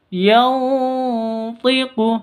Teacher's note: nun mati bertemu dengan tho cara bacanya samar didengungkan siap-siap ke huruf thnya